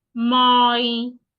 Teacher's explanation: If I want to read this sentence, the first word, my, has a glide vowel, so I have to go slowly.